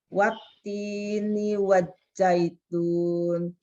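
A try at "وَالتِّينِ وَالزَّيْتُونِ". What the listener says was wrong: Wazaitun. Pakai Z. Wati. T-nya yang tenang dulu. Wati. Panjangin. Wattini wazaitun.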